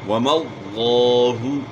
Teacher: لفظ اللہ کے لام سے پہلے والے حرف پر زبر ہے تو لفظ اللہ کا لام خوب پر پڑھا جائے گا